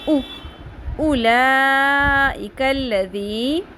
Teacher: اب یہاں پہ واو خالی ہے تو اس لیے واو سائلنٹ ہو جائے گا، پڑھنے میں لکھنے میں آئے گا.